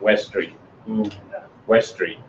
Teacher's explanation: you probably wouldn't pronounce the T on West or Street